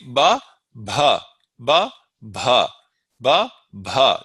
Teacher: Do you hear how I'm saying ba without breath and then bha with breath? It's simply I'm blowing some breath out when I am saying it, and with the other one, with the ba with no breath, I'm simply opening my lips.